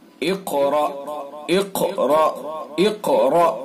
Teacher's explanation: قاف کو پر کر کے پڑھیں گے اور قاف کے اندر قلقلہ بھی کریں گے اور را کو پر کر کے پڑھیں گے۔